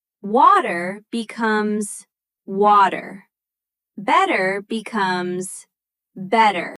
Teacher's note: That's called the flap T. Between two vowels, American English often turns T into a soft D sound.